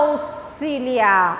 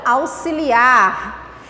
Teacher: o X com o som de SS, que o S vai sair bem puxadinho, bem demorado